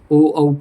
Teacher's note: ओ और औ का उच्चारण कंठ और ओष्ठ से होता है। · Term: कंठ ओष्ठौ